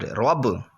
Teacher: یہاں پر قلقلہ خوب ظاہر ہوگا کیونکہ حرف قلقلہ میں سے با ساکن ہے